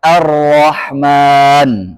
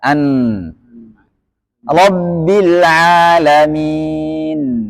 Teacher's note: pengucapan huruf dengan suara yang tidak terlalu tertahan dan tidak terlalu terlepas antara syiddah dan rahhawa kalau syidah tertekan kalau rakhawa terlepas maka 5050 Nah maka enggak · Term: tawasut